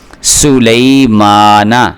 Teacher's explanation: یہ دیکھیں سو لئی، میم کے اوپر کھڑا زبر ہے، ما اس کو تھوڑا سا لمبا کر کے پڑھیں گے، نون کو لمبا کر کے نہیں پڑھنا